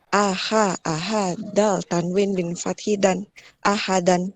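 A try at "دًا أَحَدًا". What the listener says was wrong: Ya, insyaallah betul, barakallahu fiik.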